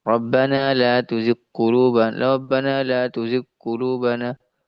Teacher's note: Huruf ghain ya di tenggorokan paling atas, ya, mendekati langit-langit yang lunak. Huruf qaf di langit-langit yang lunak, di pangkal lidah.